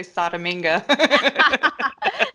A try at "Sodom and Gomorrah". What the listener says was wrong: Sodom and Gomorrah. It's two separate names. Sodom and Gomorrah.